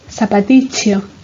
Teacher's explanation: También se puede escuchar el sufijo iquio, pronunciado incluso con palatalización, es decir, con la che